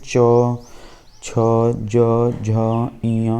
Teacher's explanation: इनके उच्चारण में जीभ तालू को छूती है जीभ जो जीभ के ऊपरी वाला जो भाग होता है वो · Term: तालव्य